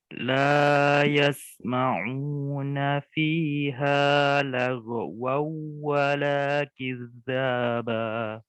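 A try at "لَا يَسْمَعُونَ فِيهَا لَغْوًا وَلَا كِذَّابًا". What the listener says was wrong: Itu ghain itu alirkan, jangan diputus suaranya. La yasma'una fiha lagwaw wala kizzaba. Lagwaw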